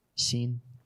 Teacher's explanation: it's like an SH, but it's up at the front of the teeth